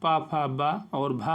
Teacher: पा वर्ग पा, फा, बा और भा, और इसमें साथ माँ, ये ओष्ठ दोनों ओंठों से होते हैं, इसे ओष्ठ कहा जाता है।